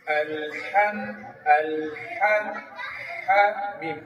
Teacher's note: হা এর উচ্চারণ যখন আমি করব বাতাস চালু থাকবে · মিম উচ্চারণ হয় কোথা থেকে ঠোটের শুকনা অংশে